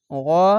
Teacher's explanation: গা বলবেন না কেন মোটা অক্ষর তার জন্য গাইন জবার গ আকার উচ্চারণ হবে না